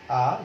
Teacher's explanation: জিহ্বাটা কিন্তু নিচের দিকে থাকবে এবং বিবৃত অবস্থায় থাকবে। এখানে আবার আমরা দেখতে পাচ্ছি আমাদের ওষ্ঠাধরের যেই অবস্থান। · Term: কেন্দ্রীয় স্বরধ্বনি